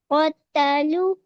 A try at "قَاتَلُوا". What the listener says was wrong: قاتلو، قا stretch کرنا ہے.